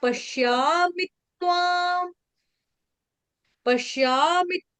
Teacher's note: यहां पर जो त है त का डबल हो जाएगा।